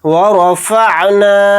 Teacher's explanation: تھوڑا یعنی ایک الف کی مقدار نون الف کو کھینچ کر پڑھیں گے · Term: مدہ